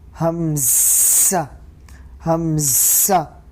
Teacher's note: حلق کے سرے سے حمزہ ادا ہوتا ہے